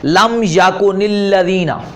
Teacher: مثلا آپ دیکھیں ایک ہے نا لم یکن، ٹھیک ہے جی، لم یکن، یہ نون کے اوپر، اور الذین ہے آگے الذین، تو اب یہاں الف لام الذین، آپ کو پتہ شد ہے، شد کے اندر ایک ساکن ہوتا ہے ایک متحرک ہوتا ہے، اب اس کو پڑھنا ممکن نہیں تھا تو عرب والے کیا کرتے ہیں نون کے نیچے زیر دے دیتے ہیں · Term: تحریک